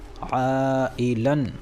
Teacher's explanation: یہ تنوین الف سے بدل جائے گی اور حرف مدہ کی طرح ایک الف کے برابر کھینچ کر پڑھی جائے گی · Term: مد عوض